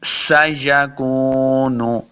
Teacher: سین پہ سیٹی کی آواز آئے گی، سیکون، اس کاف کو موٹا نہیں کرنا، کاف پیش واو کو جب پڑھیں گے اپنے ہونٹ دونوں گول ہوں گے تب واو کا مخرج صحیح ادا ہوگا۔